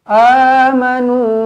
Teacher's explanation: amanu jadi jangan salah a kena dua harakat mad badal